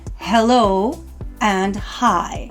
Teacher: Some of the words or expressions that we will use will begin with the letter H, which means we have to be careful because that's an aspirated H sound, which means that we force air out of our mouth, so it's very windy